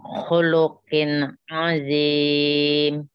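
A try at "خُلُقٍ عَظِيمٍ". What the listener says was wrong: Kofnya jangan terlalu ke belakang, ki, dan agak ke depan. Ki, khuluk.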